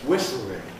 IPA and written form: ˈwɪsl̩ɪŋ (whistling)